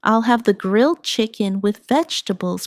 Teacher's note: The main stress is on grilled chicken and vegetables